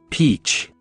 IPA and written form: piːtʃ (peach)